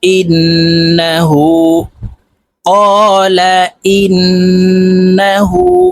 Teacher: হার উপরে উল্টা পেশ আছে, তাই এই হাকে এক আলিফ টেনে পড়বো